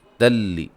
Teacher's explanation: نون تنوین کا ادغام ہے لیکن بلا غنہ ہے